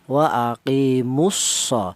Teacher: Jadi harokat dhammah ini wa aqimus langsung masuk ke huruf shad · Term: idgham